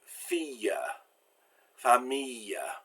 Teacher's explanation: Now, il in the middle of the word and il at the end of the word are pronounced like I followed by the semivowel Y. So it's not pronounced like an L like it usually is. It turns into a Y sound.